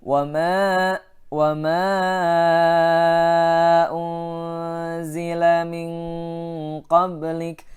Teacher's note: min ikhfanya ikhfa ab'ad, sehingga dengungnya lebih jauh ya, lebih jauh dengan dari suara nun.